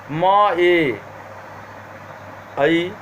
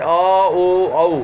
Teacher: एकार और औकार की पूर्ववर्ती मतलब प्रथम मात्रा कंठ में उच्चारित होती है, परवर्ती मात्रा तालु और होष्ठों में उच्चारित होते हैं।